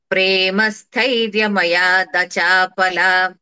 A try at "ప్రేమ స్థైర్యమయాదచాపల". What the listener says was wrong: ఇంకా లాకి దీర్ఘం వినిపిస్తుంది, అది కూడా కాకుండా అచాపల.